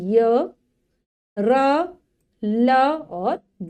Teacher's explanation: मतलब जब हम इनको बोलेंगे तो देखेंगे कि वायु ऊपर की तरफ जाती है लेकिन ऊपर से टकराती नहीं है। जो हमारी जिह्वा है वो भी ऊपर की साइड जाती है बोलते हुए, लेकिन ऊपर से पूरी तरीके से छूती नहीं है। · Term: अंतःस्थ व्यंजन